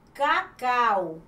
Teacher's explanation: Observe que o au está na mesma sílaba. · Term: ditongo